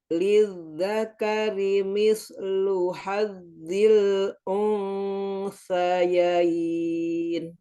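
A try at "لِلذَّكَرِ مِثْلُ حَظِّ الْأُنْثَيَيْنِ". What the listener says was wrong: Coba pas baca usa lidahnya dikeluarin kayak mau baca usa. Kayak usa. Ya, sekarang usa sama cara bacanya. Kayak lidahnya coba inget-inget ini.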